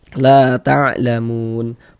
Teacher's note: Nah, maka huruf yang memiliki harokat fathahnya dibaca panjang. Nah, di sini hurufnya huruf lam yang memiliki harokat fathah, sehingga la dibaca panjang. Mad tabi'i panjang 2 harokat.